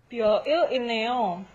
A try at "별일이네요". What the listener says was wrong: You really separated those two syllables, right? 별일이네요. 별일.